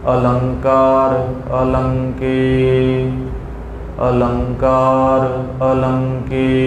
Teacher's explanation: ਅ ਨਹੀਂ ਛੱਡਣੇ ਅ ਅਗੇਤਰ ਲਾ ਕੇ ਪਾਠ ਕਰਨੇ ਹਨ